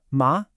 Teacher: The second tone rises up like you're asking a question. Ma. The third tone dips down and then comes back up.